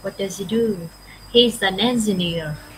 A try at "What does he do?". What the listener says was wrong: Yes.